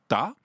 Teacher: la langue fait un obstacle complet avec le palais puis elle le relâche brusquement pour faire le a